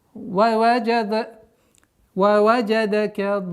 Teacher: Так как в конце удлинение да, в конце нам нужно показать тембром, что есть удвоенный знак.